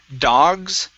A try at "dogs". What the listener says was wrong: S at the end. Dogs.